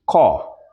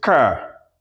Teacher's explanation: The R sound is pronounced. That's what we call rhotic in phonology.